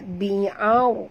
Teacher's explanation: kita kena baca tebal, dinamakan ra' tafkhim. Bi'ar, naikkan lidah ke atas. Bi'arushiha.